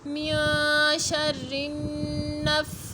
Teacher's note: جب وقف کریں گے تو پڑھیں گے من شر النفاثات، تا کو ساکن کر دیں گے